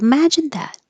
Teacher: Imagine and that have the same vowel ah.